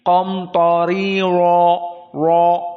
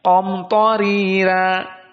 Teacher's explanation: maka qiraah hafaz akan dibaca ro-nya dalam keadaan tafkhim yang kedua